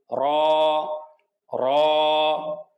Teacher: র, এক আলিফ টান হবে, র মোটা করে পড়তে হবে। জিহ্বার আগার পিঠ তার উপরে তালুর সাথে লাগিয়ে এক আলিফ টেনে পড়তে হবে